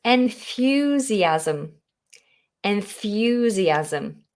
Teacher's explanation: that wonderful th you have to get the tongue between the teeth